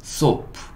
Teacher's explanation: 지금은 약간 쌍시옷 소리를 낼 거예요.